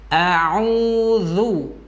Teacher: Ainnya di tengah ditekan karena makhrajnya adalah tengah tenggorokan. Jikalau kita tidak menekan, maka tidak akan sampai ke makhraj tenggorokannya.